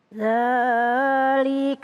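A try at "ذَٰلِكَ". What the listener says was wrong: kepanjangan. Ya, dzalika kepanjangan.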